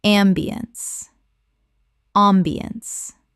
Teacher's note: The ence collapses to unts.